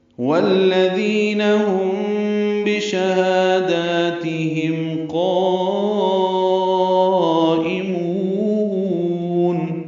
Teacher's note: یہاں پہ ہم میں بشہادات با آنے کی وجہ سے، میم ساکن کے بعد با آنے کی وجہ سے اخفاء شفوی ہوا ہے، ہم بھی ہونٹوں میں اخفاء کریں گے